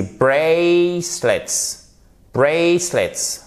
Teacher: Vous avez l'accentuation ici sur la première syllabe et en plus c'est un A pour prononcer le A.